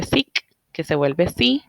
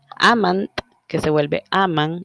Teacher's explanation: la última regla que corresponde a esta primera etapa es el apócope de oclusivas finales